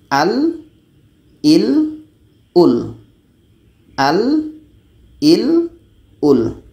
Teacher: Dan la ini kebiasaannya memang akan dibaca secara jahar, tidak ada angin di sini.